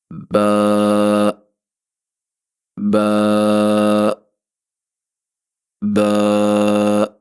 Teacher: با کہاں سے ادا ہوگا؟ ہونٹوں کے گھیلے والے حصے کو ہم سختی کے ساتھ ملائیں گے تو وہاں سے باریک آواز میں با ادا ہوگا۔